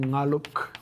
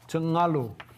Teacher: another sound change that got rid of K at the ends of words. So if you had a K at the end of the word, it would drop, which changed underlying ngaluk, which is the word for story, to ngalu.